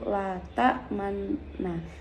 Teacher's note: Nun yang pertama diidghamkan pada Nun yang kedua · dibaca ismam atau mecucu dan ismamnya setelah idgham atau gunah kalimat tersebut asalnya adalah latak manunna kemudian Nun yang pertama diidghamkan